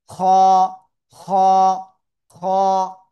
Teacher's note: গলার শেষ ভাগ থেকে উচ্চারণ করবো।